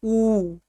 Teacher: देखिए ऊ तो दोनों ओठ आपके सट जा रहे हैं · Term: ओष्ठ